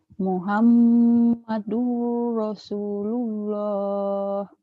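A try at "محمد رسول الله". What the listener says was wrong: bagus tapi durnya kurang masuk.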